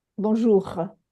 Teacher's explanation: this letter R is from the front of the mouth in French it comes from the back of the throat like a soft gro.